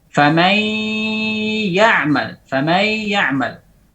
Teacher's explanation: Ya yang kedua tidak ada gunnah di situ.